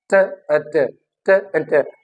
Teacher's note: जो tip of the tongue है वो एट वंस क्या होके वापस आ रही है, वो फ्लैप करके it flaps against the alveolar ridge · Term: tap